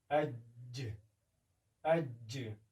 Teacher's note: د جیم په مخرج کې ژبه په تیزۍ سره یا په شدت سره په تالو باندې لګېږي او غږ په بشپړ توګه بندېږي لکه اج. اما د شین د ادا کولو په وخت کې هوا پاشل کېږي لکه اش من الشیطان یعنی هوا پاشل کېږي اما دومره په شدت سره نه لګېږي لکه د جیم په وخت کې.